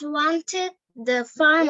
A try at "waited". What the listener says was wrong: Wanted na baby, এই যে দেখো স্পেলিং টা দেখো। Waited baby, WAI.